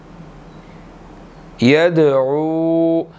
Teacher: दाल साकिन है, यहाँ पर दाल पर कलकला होगा